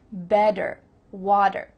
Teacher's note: In American English, a T that's between two vowel sounds, it doesn't always have to be a vowel, but between two vowel sounds is going to change to a D.